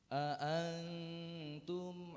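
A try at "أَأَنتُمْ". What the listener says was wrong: Tahan lagi. A'antum. Tahan lagi dikit.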